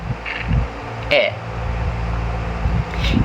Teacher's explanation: This means the tongue is positioned towards the front of the mouth and the jaw is relatively open but not fully lowered. The sound is short and sharp. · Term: near open front vowel